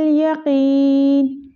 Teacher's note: यहाँ पे या मद्दा है तो क़ाफ को हम लंबा करेंगे